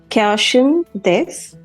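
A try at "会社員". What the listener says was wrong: First of all, it's not cash in this, it's kaisha in this. Kaisha. In Japanese, we pronounce all the syllable separately. Like in English, sometimes some letters are silent. We don't pronounce it clearly. But in Japanese, we always pronounce all the syllable clearly. So it is kaisha in.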